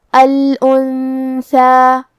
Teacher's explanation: کلمت الانثى میں یہاں نون ساکن ہے، پھر حرف الثا ہے، ثا حروف الاخفاء میں سے ہے، تو ہم یہ حکم کو غنہ کے ساتھ ادا کریں گے